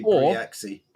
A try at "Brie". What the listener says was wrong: Or it could be just Brie, because Grand Prix, and you don't pronounce the X, it's just an E sound.